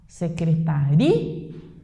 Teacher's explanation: Então, a sílaba tônica é o ri.